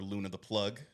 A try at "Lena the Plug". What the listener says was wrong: Lena the plug. Lena. It's not Luna, it's Lena.